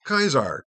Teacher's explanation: That is a Germanic form of Caesar, because in classical Latin, Caesar, which is spelled Caesar, is pronounced Kaiser, because the AE is a diphthong that is pronounced with a strong AI, or AEI. So that sound like Kaiser In German becomes Kaiser, Kaiser, and then in Russia becomes just kind of shortened just to Tsar, Czar.